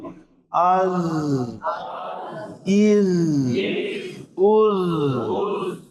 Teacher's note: زبان مخرج سے لگ گئی از. اور کیا ہو رہا ہے بھائی؟ آواز جاری رخوت کی وجہ سے